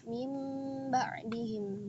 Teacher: Miman bi gunnatin mal ikhfa'i. Cara bacaan iklab yaitu disertai dengan gunnah dan ikhfa, disamarkan ya.